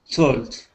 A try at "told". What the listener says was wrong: Okay, so the idea here, your T sounds much better, but you need to be able to control your tongue so it does not drop down again and pronounce a T, because you're saying talt. Okay, you need to keep your tongue curved up to the top in pronouncing that L, but we'll continue to work on it.